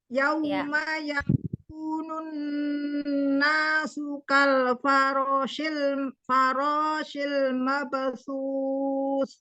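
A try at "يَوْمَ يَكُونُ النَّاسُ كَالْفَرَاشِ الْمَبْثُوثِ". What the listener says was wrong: Yau, wow sukunnya hati-hati ya, dimonyongkan, ma-nya tidak dipanjangkan. Yauma yakunun nasu kal farashil mabthus.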